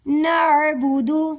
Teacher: نعبد عین گلے سے نکالیں گے